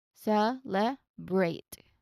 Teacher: So it's a continuous B to R sound, not celebrate. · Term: BR blend